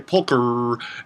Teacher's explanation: if you want to pronounce that R without adding anything after it, you need to kind of put a dummy vowel in.